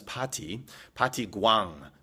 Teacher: in the Korean language, there is no R sound. So party becomes pati gwang.